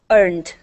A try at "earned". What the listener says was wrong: Here, we want to pronounce a D sound instead of a T.